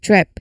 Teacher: So when you say trip, it's the t sound flowing directly into the r sound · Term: tur cluster